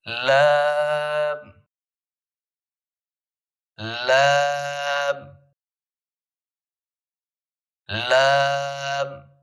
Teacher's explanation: سیدھی جہاں پہ زبان سامنے والے تالو کے ساتھ لگتی ہے نا وہاں پہ لگانا ہے آپ نے.